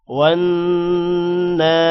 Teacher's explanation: واو نون زبر ون نون پر غنہ ہوگا